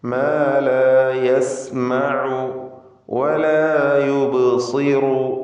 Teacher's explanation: ബഇൻ്റെ സുക്കൂൻ ഖൽഖല സുഗ്റ നൽകി ശബ്ദം ചലിപ്പിക്കണം. സ്വാദ് തഫ്ഖീമിൻ്റെ അക്ഷരമാണ്, ഇസ്തിഅലാഇൻ്റെ 7 അക്ഷരങ്ങളിൽപ്പെട്ടതാണ്.